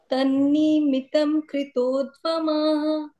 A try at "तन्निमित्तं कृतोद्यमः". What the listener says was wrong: तन्निमित्तं कृतोद्यमः। हाँ, निमित्तम में जो है ना, थोड़ा मी को दीर्घ नहीं करना, छोटा ही है वो, निमित्तम।